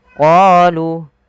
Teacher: Pada lafal bacaan qalu da'u lana, panjangkan huruf qa 2 harakat karena pada lafal qa ada bacaan mad tabi'i, yaitu ditandai dengan huruf qa yang bertemu alif setelahnya.